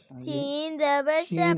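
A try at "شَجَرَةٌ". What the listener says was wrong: شین اب سین پڑھ دیتے.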